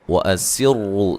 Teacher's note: سین کو باریک سیٹی سے، را کو موٹا ادا کریں گے